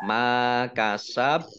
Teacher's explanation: bacaan qalqalah dibaca memantul dan ditampakkan pantulannya